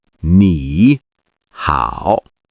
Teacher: Notice the tones. The first syllable rises slightly, and the second dips and then rises.